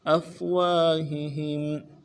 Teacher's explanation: گے علی افواہہم، افواہہم، حمزہ کو فا کے ساتھ ملانا ہے، واو کے بعد الف مدہ ہے، ایک الف دال میں کھینچیں گے